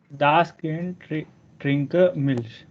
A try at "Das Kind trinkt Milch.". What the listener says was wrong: Trinker, why you are using trinker? Das Kind, D becomes T at the end. Das Kind trinkt Milch. Das Kind trinkt Milch.